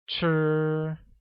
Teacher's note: Want translates to 要 and is pronounced with a falling tone, like 要, while eat translates as 吃, which uses a high level tone on I, making it 吃.